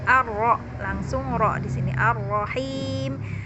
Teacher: Ar-Rahim berarti dia adalah sempurna memasukkan ke huruf ro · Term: alif lam syamsiyah